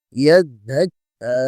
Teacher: কাফ খাড়া জবর ক্যা, টান হবে এক আলিফ।